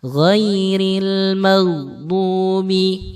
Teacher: huruf ghin itu banyak yang memantulkan ketika dia disukun. Ini banyak saya mendengar seorang yang membaca surat Al-Fatihah ghairil maghdubi, enggak boleh dikolkolahkan.